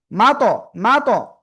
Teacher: জিহ্বার আগা উপরে দুই দাঁতের গোড়ায় লাগবে। তো এই লাগার সময় একটু জোরে ধাক্কা লাগবে, জোরে এরকম লেগে এরকম ছেড়ে দিবে, এতে একটা অতিরিক্ত আওয়াজ হয়, সেটা হলো কলকলা।